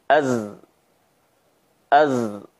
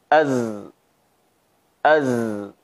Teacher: az mengalir namun udara sedikit, ya, az dan bergetar pada bagian pita suara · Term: huruf zai